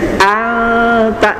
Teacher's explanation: Karena nunnya ditahan lebih lama, ikhfa-nya ditahan lebih lama. Cukup 2 harokat saja tambahannya, ya.